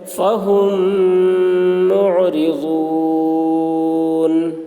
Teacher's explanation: میم ساکن کے بعد میم آ رہا ہے، اس لیے میم کو میم سے ملا کر غنہ کے ساتھ پڑھیں گے ، اس کو ادغام شفوی کہتے ہیں۔ فہم معرضون